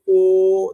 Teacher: একে বলে কুঞ্চিত স্বরধ্বনি তাহলে ঠোঁট দুটো কুচকে যাচ্ছে · দুটো ঠোঁটের যে পাতা সেই দুটো এক জায়গায় হয়ে একটা ছোট্ট জিরোর মতন হয়ে যাচ্ছে